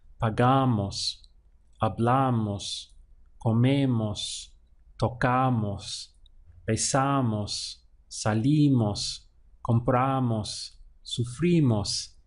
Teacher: moss happens in the word at the end a gamos so we stress the syllable right before moss